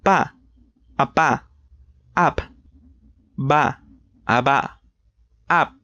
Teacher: These are made using both of your lips. On the first column we have two bilabial plosive, which means that you have to completely close your mouth and then expel air with some force. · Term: bilabial plosives